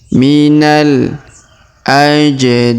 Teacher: minal huruf na langsung sambung ke alif lam qamariyah.